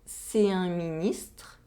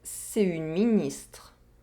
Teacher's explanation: The difference between these two sentences is the masculine determiner is one nasal vowel sound, un, whereas the feminine determiner is one oral vowel sound and a consonant sound, une.